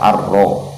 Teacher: ra-nya dibaca takrir juga, dibaca takrir, dibaca bergetar lidah, bergetar ujung lidah kita bergetar, ar-ro. Ro-nya dibaca tebal, dibaca tafkhim karena berharokat fathah.